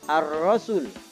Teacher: ketika as Syamsiah maka Alif lamnya tidak kita dengar atau tidak terbaca